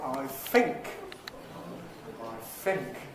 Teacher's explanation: So we get [θ] becoming [f]. Dental becomes labio-dental. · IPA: aɪ ˈfɪŋk